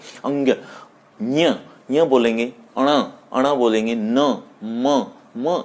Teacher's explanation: ये सब के सब नासिक्य में आएंगे, क्योंकि इसमें नाक की सहायता ली जाती है। जैसे अंग, ञ बोलेंगे, अण बोलेंगे, न, म, इन वर्णों को जब हम बोल रहे हैं तो नाक की से ध्वनि निकल रही है, ऐसा महसूस हो रहा है, तो इसीलिए ये नासिक्य वर्ण कहलाएंगे।